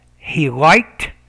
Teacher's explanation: the ed there is pronounced as a t because it comes after a voiceless consonant